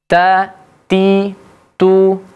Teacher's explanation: keluar angin sedikit ketika mengucapkan huruf ta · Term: huruf hams